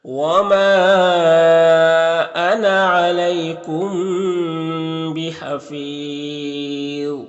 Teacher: بحفیظ یہاں پر وقف کریں گے تو مد عارض وقفی ہوگا، اور ذو حروف مستعلیہ میں سے ہے تو پر پڑھیں گے